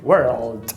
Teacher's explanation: É o epsilon ao contrário. E aí você tem um R caipira, mais um L velar, mais um D